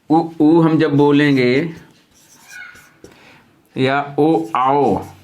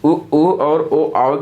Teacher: वृत्तमुखी स्वर और आवृत्तमुखी स्वर, इसको तो याद नहीं करना पड़ेगा, हम लोग पहचान जाएंगे। जिनके उच्चारण में मुख हमारा जो है वृत्ताकार हो जाता, ओठ हमारे गोलाकार में आ जाते हैं और इसमें गोलाकार रूप नहीं प्राप्त करते हैं।